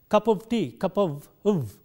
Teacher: both in the strong as well as in the weak form, there is no f sound here in this word. It is a v sound.